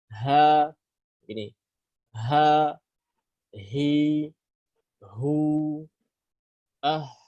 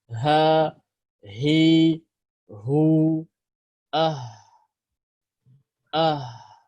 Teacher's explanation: suara ha dari tenggorokan bawah atau pangkal tenggorokan, lautar as-sautiyah, yaitu pita suara.